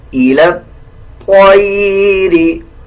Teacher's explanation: طا کو بھی موٹا پڑھا جائے گا اور لام کو اس طا کے ساتھ ایڈ کر کے پڑھیں گے